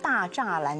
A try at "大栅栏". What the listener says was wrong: 大 石 栏 ， 你 不 能 看 那 个 字 的 发 音 ， 因 为 北 京 很 多 发 音 是 满 语 ， 满 语 ， 所 以 大 石 栏